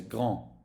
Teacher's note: You don't hear the D, you say grand. Again, nasal sound.